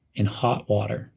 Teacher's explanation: situation Link in and hot as almost one word in hot emphasize the word hot in hot water